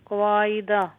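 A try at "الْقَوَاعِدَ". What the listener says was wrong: क़वाइदा नहीं है, आइन भी लंबा नहीं है, क़वाइदा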